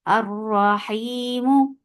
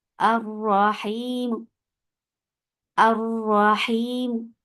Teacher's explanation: जैसे बस वसल में हम पढ़ रहे हैं वैसे ही पढ़ा जाएगा, बस आखिरी हरका को हम उसका जमन भी कम करें, यानी उसकी लेंथ भी कम करें, उसको बोलते अपनी आवाज भी नीचे रख रहे हैं, और हम दम्मा या कसरा को ही हरकत, यही हरकत को चूज करेंगे रोम के वक्फ के लिए। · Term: अर्रोम